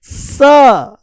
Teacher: और यहां पर जो ये दांत लटके हुए हैं, दांत, ये स का स्थान है, ये दांतों से बोला जाता है